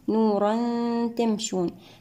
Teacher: التنوين مع حرف التاء لدينا حكم الإخفاء الحقيقي بغنة مرققة المرتبة العليا